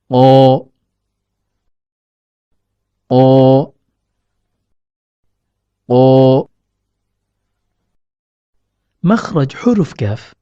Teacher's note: huruf qof keluar dari pertemuan antara pangkal lidah dengan langit-langit lunak atau yang diistilahkan dengan pala tumor contohnya terletak pada pangkal lidah